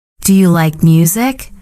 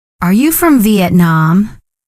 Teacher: When you ask a yes/no question, your tone usually goes up at the end. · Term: Rising tone